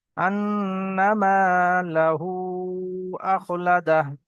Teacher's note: আলিফ মাদ্দা এক আলিফ পরিমাণ টান দিয়ে পড়তে হবে